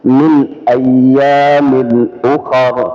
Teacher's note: Jadi min itu lisannya dirapatkan ke makhrajnya min ya. Dan tidak didengungkan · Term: izhar